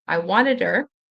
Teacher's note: because there is a consonant followed by a vowel sound, it's der, wanted her.